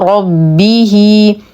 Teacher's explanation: نفخم الراء نتم كسره الباء مع التشديد نصل الها بيا مديه صلله صغرى بمقدار حركتين ربه ولا